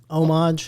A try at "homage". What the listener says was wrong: I think the H is silent, but we'll take it.